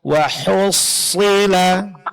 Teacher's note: Huruf shad tasdidnya jelaskan dan lebih ditebalkan